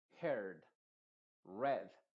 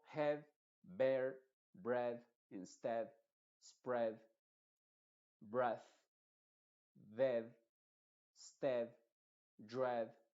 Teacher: estos se pronuncian con una e en vez de una I